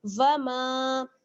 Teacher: میم میں آپ دیکھ رہی ہیں الف مدہ ہے، اس کو ہم تھوڑا سا کھینچیں گے